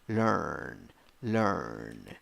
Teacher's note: five letters four sounds one syllable and the vowel is schwa